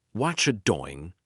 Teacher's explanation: Native speakers say, watcha doing. The T and R join together and become cha.